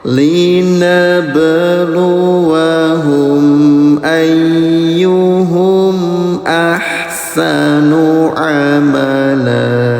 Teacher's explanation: Ba sukun dipantulkan ya, namanya qalqalah.